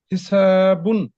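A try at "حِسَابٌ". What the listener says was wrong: সিনটা আরেকটু স্পষ্ট করতে হবে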